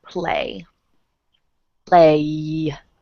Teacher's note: the Y at the end it vibrates my throat or my throat vibrates so it's a voiced sound